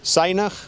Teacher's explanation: waarin het Nederlands de klank z en de letter z worden gebruikt is dit in het Afrikaans de klank s